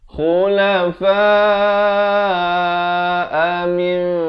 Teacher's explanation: Khu di hujung kerongkong makhrajnya.